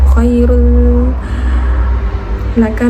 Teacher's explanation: Nah di situ rulnya juga didengungkan sepanjang 2 harokat